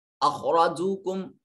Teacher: خا اور را کو موٹا اور پر کر کے پڑھا جا رہا ہے